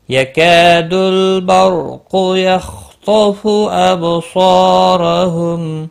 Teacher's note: الف مدہ ہے، ایک الف کے برابر کھینچ کر پڑھیں گے · قاف مستعلیہ ہے، پر پڑا جائے گا. خا اور طا دونوں مستعلیہ ہیں، پر پڑے جائیں گے. اب با ساکن پر قلقلہ ہوگا.